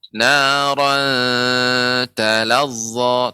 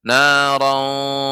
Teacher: ikhfa ketemu dengan ta itu tidak tebal. Jadi naran talazza, tidak boleh narauta, itu tebal ya.